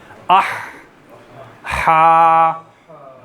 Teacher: हलक के दरमियान से ये लफ्ज़ निकलता है, ये हर्फ निकलता है, आह, हा।